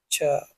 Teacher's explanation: तालव्य महाप्राण अघोष व्यंजन वर्ण